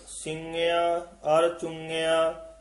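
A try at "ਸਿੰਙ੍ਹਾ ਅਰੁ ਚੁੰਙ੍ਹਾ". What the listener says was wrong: हां जिहड़ा ना पिछे इत्थे बिंदी नहीं लाउणी सिंग्या अर चुंग्या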